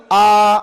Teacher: రెండవ అక్షరం ఉన్నది ఆ అని దీర్ఘం ఉన్నది ఆ దీర్ఘాక్షరం ఏదైతే ఉందో అది ద్విమాత్రాకాలం పలకాలట